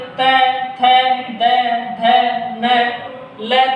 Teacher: त थ द ध न ल तथा श वर्णों का उच्चारण स्थान दंत होता है